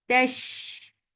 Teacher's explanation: Sheen will get sifa of rakha and tafashi, and it is light. Tash. The sound should flow because rafqawa means flow of sound.